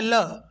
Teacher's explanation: जीभ के पार्श्व भाग से बोला जाता है। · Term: पार्श्विक व्यंजन